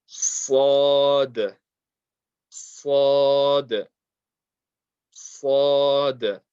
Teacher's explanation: The tongue touching the bottom teeth, and it's a heavy letter, so we put lots of pressure there on the makhraj. Raise the back end of the tongue, slowly release the sound, and round the mouth.